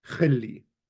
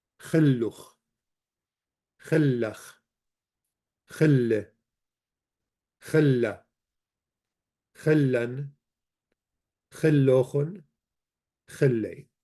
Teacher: you do not pronounce the alep in the past tense